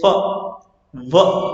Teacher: लैबिया dental, लैबिया dental, जब हम lower lips को टच करते हैं अपर फ्रंट टीथ से, यानी कि नीचे वाला जो लिप है ऊपर वाले दांतों से जब टकराता है तो लेबिया डेंटल होता है हमारा। तो फ, व, ध्यान से देखना, ये वाला जो है ये लिप्स से बनेगा।